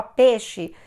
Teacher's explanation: no caso do peixe, ele pode virar monotongo, digamos assim. Ele vira uma coisa só